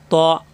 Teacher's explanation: মুখটা একটু গোল হবে, ত মোটা হবে, জিহ্বা উপরে 2 দাঁতের গোড়ায়,